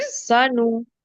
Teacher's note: नून को खींचना नहीं है, सिर्फ पेश है उसके ऊपर